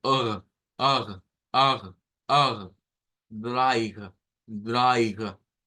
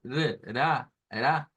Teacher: Es una R que decimos que se hace en la garganta, aunque realmente se hace en la úvula. Pero la fuerza, digamos, para poderla articular es acá. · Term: R gutural